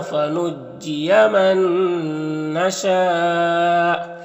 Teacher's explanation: نون ساکن کے بعد نون ہے تو نون کو نون سے ملا کر غنہ کے ساتھ پڑھیں گے، اس کو ادغام ناقص کہتے ہیں، اور شین میں جو مد ہے مد متصل ہے تو اس طرح سے پڑھیں گے۔